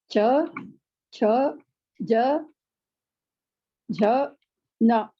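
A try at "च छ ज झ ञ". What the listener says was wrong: Anya. Second cha is a little bit harder.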